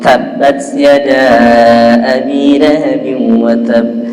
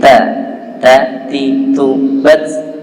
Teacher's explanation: Ta itu haknya adalah dia harus keluar nafas, hames.